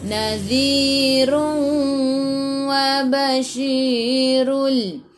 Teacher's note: Nadhi tu hujung lidah keluar pada gigi depan. Di 2 harakat ada ya, mad asli.